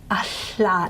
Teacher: if you put a glottal in front of the lateral, you end up with a hla. Now what happens is, the air's flowing freely along the sides of the tongue, but in fact the sides of the tongue against the cheeks, it is a little bit of a constriction, okay? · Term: lateral fricatives